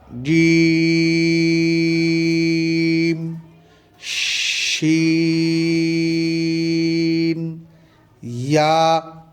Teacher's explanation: জিহ্বার মধ্যখান তার বরাবর উপরের তালুর সঙ্গে লাগিয়ে উচ্চারিত হয়।